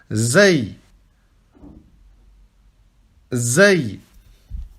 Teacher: c'est comme si c'était un Z, d'accord ? Vous ne mettez pas votre langue entre les dents. Ici, vous prononcez comme si c'était un Z, normal.